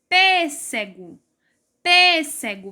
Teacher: a sílaba mais forte aí é a antepenúltima e ela está acentuada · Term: proparoxítona